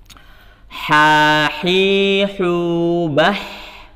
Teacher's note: Ya, ha ini bersih ya. Tempat keluarnya di mana? Tenggorokan bagian tengah, sehingga bersih.